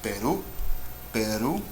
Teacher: you can hear my voice goes up at the end. So ru is the last syllable.